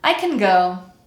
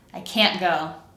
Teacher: in the word can't, we leave the vowel sound alone, but you will hear an audible glottal stop at the end of that word